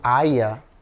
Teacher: o nome dela, vocês perceberam que ela fala Aya?